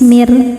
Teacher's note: Ro ketika berhenti dibaca secara tarqik karena rnya disukunkan dan sebelumnya ada huruf berharakat kasrah maka rnya tipis · Ro ketika berhenti dibaca secara tarqiq karena ro-nya disukunkan dan sebelumnya ada huruf berharokat kasrah, maka ro-nya tipis mir. Dan karena ro-nya ini ada tasydidnya, berhenti pada huruf bertasydid yang bukan gunnah, bukan nun, bukan mim, bukan qalqalah, bukan ba, jim, dal, to atau qaf, berhentinya pakai nadr, naikkan intonasi suaranya.